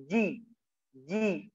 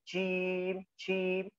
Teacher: di tengah lidah ditempelkan ke langit-langit atas